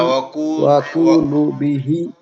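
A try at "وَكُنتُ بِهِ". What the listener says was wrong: ওয়া কুতু ওখানে তা আছে, আপনি নুন কেমনে পড়তেছেন, ওটা তো তা।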